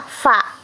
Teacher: gabungan antara gigi atas dengan bibir bawah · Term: bunyi labiodental